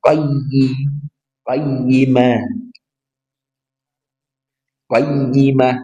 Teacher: qayyimah jadi ditekan karena dia bertasydid